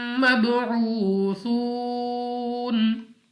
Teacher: یہاں پہ پھر واو مدہ ہے، یہ اس صورت میں ہوگا کہ اگر آپ یہاں پہ ملا کے پڑھنا چاہیں تو پھر تو آپ واو مدہ کے ساتھ پڑھ سکتے ہیں، لیکن اگر آپ یہاں پہ رکنا چاہتے ہیں، وقف کرتے ہیں، تو یہی مدہ مد عارض بن جائے گا اور ہم نے 2 نہیں بلکہ 4 سے 5 سیکنڈ تک نون کو ساکن کرتے ہوئے کھینچ کر پڑھنا ہے